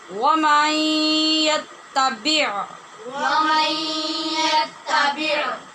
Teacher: بع حلق میں اپنے مخرج میں جا کے عین کو ساکن کریں گے